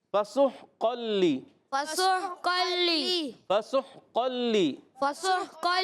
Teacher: ہا حلق کے درمیان والے حصے سے. قاف موٹے حروف میں سے، حروف مستعلیہ میں سے. · سین کو ہا سے ملائیں گے. سین سیٹی کے ساتھ ادا کرنا ہے · قاف موٹے حروف میں سے، حروف مستعلیہ میں سے. قاف زبان کی جڑ و تعلق کے نرم حصے سے ادا ہوتا ہے.